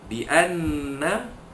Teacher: dengungkan bunyi nun mati, nun tasydid sebanyak pada kadar dua harakat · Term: wajibul gunnah